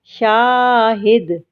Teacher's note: دال بھی حرف قلقلہ میں سے ہے اس لیے ہم نے اس کے مخرج کو ہلا کر پڑھا